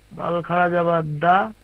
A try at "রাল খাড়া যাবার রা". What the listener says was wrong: দাল কেন হবে? দাল কেন? এটা কি? এটা কি? রাল। এটা কি? রাল। রাল খাড়া যাবার রা।